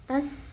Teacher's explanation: Tas sinnya ada sifat hamas, ada sifat sofir. Hamas ada angin keluar, sofir ada desisannya.